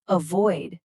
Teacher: Again, stress that second syllable, avoid.